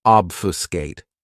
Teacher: This verb has three syllables and the stress is on that first syllable.